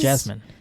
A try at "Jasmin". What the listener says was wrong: It should actually be pronounced Yasmin. Yasmin. I think it's still a ya. Ja.